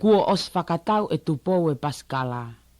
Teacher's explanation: So you can hear the I at the end of Ossi doesn't really come out that much. · The I is basically not voiced, so it you can think of this as just being os.